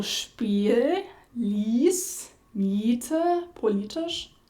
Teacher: So some English speakers have an I sound, which is similar. However, it tends to be more open and more centralized than in German.